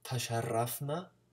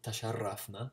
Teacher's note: that's closer to Spanish, the trill of the R